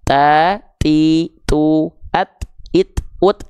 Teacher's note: ta enggak punya sifat es es es ta adanya percikan nafas